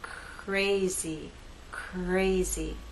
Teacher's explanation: as we begin the R, we don't have our voice. But as we move into A, now you'll hear vibration.